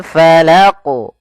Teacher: Falaq ya, bukan falaq, enggak ada tambahan hamzah.